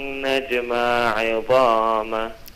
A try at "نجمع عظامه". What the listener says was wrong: Separate the two عينز. نجمع عظامه.